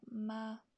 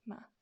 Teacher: there's no tone on it it's just ma nice and quick at the end of a sentence